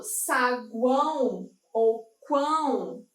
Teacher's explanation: Eu tenho essa junção aqui, eu tenho essa tripla, né, situação vocálica, mas aqui, no caso, junto, dentro de uma mesma sílaba, mas aqui eu tenho essa intensidade diferente. Então, eu tenho uma semivogal, uma vogal e uma semivogal.